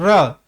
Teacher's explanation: जीवा का जो अग्र भाग है वो कांपता है ऊपर की ओर कांपता है लुंठित होता है लुड़क है बार-बार है ना तो यहां पर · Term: कंपन जात वर्ण, प्रकंपित वर्ण